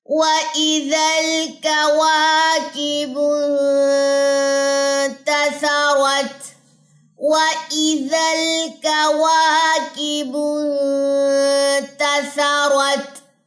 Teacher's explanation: اب اس میں صرف را موٹا ہے، باقی کوئی لیٹر موٹا نہیں ہے یہاں پہ